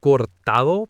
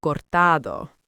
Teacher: The stress is on the middle syllable